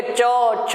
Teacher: बढ़िया चपक के छूती हैं तालु स्थान को जीभ, तभी जाके वो चवर्ण बन पाता है।